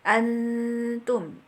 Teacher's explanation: disamarkan dan didengungkan panjang dua harkatnya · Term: ikhfa